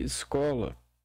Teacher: na fala o E em algumas sílabas, especialmente as mais fracas, podem soar como I, embora na escrita a letra correta seja o E. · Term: som de I